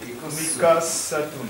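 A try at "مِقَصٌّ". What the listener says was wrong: Miqassun. Not Miqassatun. There's no tali. Miqassun.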